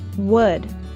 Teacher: To produce the short sound in wood, we raise the back of our tongue while rounding the lips and moving them forward a little.